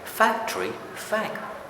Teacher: So even in fact, I just stress fact. Even in factory, I just stress fact. I don't stress the whole word factory.